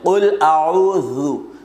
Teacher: اعوذ میں عین حروف ہلکی ہیں، وسط حلق سے ادا ہوگا